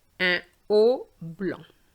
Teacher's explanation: No liaison between un and haut.